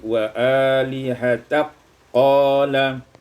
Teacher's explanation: idghamul kaf fil qaf, diidghamkan kaf pada qaf menjadi wa alihatak qala.